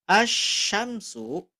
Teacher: lamnya ada tapi tidak dibaca atau diabaikan karena bertemu dengan huruf Syamsiah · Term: idgham